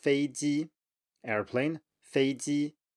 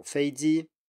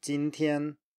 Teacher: here we have two high tones in a row